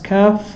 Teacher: also pronounced from the back of the tongue, but not as far back as the qaf, a little to the front of the teeth when touching the palate.